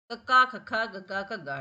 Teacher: ਜੀਭ ਦਾ ਪਿਛਲਾ ਹਿੱਸਾ ਉੱਠ ਕੇ ਉਹ ਸੰਘ ਨਾਲ ਲੱਗਦਾ ਆਪਣੇ ਅੰਦਰ ਠੀਕ ਹ ਕੋਮਲ ਹਿੱਸੇ ਨੂੰ ਛੂਦਾ ਠੀਕ ਹ ਉਸ